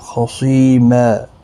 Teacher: خا مستعلیہ ہے، صاد بھی مستعلیہ ہے، پر پڑھے جائیں گے